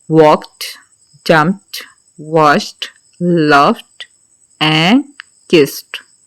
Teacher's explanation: इनके आपने एंड पे आपने ड साउंड प्रोनाउंस नहीं करनी ट साउंड करनी है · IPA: /t/